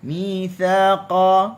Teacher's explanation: Okey, mithaqa bani, mitha, sa, hujung lidah di hujung gigi atas, bagi atas kita buka sa, qaf bagi atas qa, mithaqa, qaf huruf isti'la dibaca ataupun mulut kita buka tu lebih luas berbanding dengan huruf sa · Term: huruf qaf